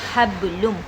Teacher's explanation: हा को बा में जब मिलाएंगे यहाँ पर भी क़लक़ला सुग़रा हो रहा है, ये हल्का क़लक़ला है